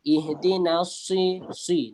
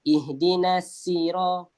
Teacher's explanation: Sebab sin kita nipiskan lagi, sad ada ketebalan dia. Dan dalam qiraat memang ada imam yang membaca sin, sira tu dengan sin.